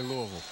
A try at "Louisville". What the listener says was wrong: I think the locals, it's a two-syllable word. It's Louisville.